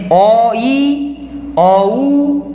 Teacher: তো ই বা উটা কিন্তু অর্ধেক উচ্চারণ হচ্ছে, তাই এটাকে বলছে একটি অর্ধস্বর, অর্ধস্বর।